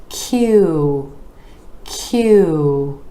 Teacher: that your lips are rounding out for this sound so we're going from the consonant where the back of the tongue Rises up to the palate and then the lips are moving forward